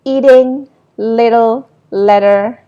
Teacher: in the words like eating, little, letter, if you realize, then it is pronounced as a flap